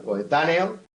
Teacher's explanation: El golpe de voz cae en la antepenúltima luego es una palabra esdrújula